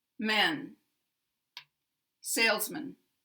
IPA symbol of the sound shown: ə